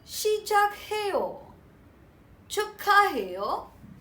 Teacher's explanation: When a syllable ending with softer k and is followed by a syllable that begins with h, The softer k and h are combined with each other and they are pronounced as the stronger k.